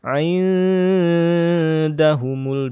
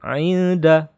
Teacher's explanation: ini adalah ikhfa, maka harus dibaca dengung